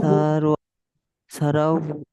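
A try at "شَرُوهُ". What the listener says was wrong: সা টান হয়ে যাচ্ছে, আমরা সারাউহু।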